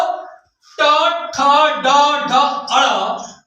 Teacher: हमारी जीवा जो होती है ताल से टकराती है मुख से आवाज निकलती है इसलिए इसे हम मुर्धन्य व्यंजन कहते